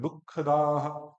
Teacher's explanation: दुख में भी ये विसर्ग रखते हैं तो थोड़ा सा बल लगता है